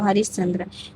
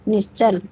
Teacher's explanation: आधा सा में बदल देंगे, वो भी तालव्य सा में